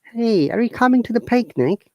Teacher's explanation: look our tone has gone up this stone or intonation is recalled rising intonation or upper intonation